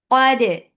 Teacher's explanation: qaf is heavy for fatha upon jaws, attach dal, keep dal light, and give nice qalqala